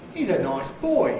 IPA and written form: iːz ə ˈnɒɪs ˈboɪ (He's a nice boy)